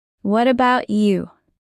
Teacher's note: Use a rising tone when you ask back.